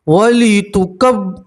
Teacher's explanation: रा के ऊपर पेश है, रा को मोटा पढ़ेंगे